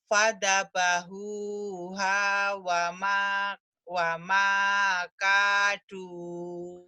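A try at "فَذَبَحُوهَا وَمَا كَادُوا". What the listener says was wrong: Alhamdulillah Ibu sudah bagus.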